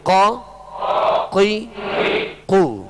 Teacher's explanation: قاف دو نقطے والا، زبان کی جڑ، تالو کا نرم حصہ